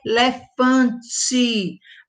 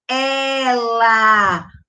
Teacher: O som do é aberto